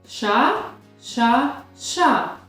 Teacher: Під час вимови цього звука язичок торкається до верхніх зубиків і утворює якби чашечку всередині ротика. При цьому видає шум і зовсім не співає. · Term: Звук ш